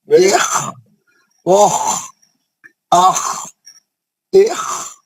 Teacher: خا ہے تو اوپری حلق سے پڑھا جاتا، یہ مستعلیہ رہنے کی وجہ سے پور موٹا پڑھا جائے گا اور کھردرا پڑھا جائے گا.